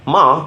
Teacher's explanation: high tone, ma means mother.